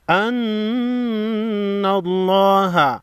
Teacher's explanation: نون مشدد کو ہمیشہ غنہ کر کے پڑھیں گے